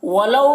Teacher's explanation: ولو میں واو لین ہے، اسے جلد پڑھنا ہے